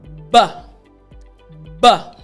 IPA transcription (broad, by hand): b